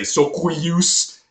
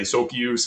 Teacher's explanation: the W actually just ended up falling out because the y sound that was put after it kind of absorbed it.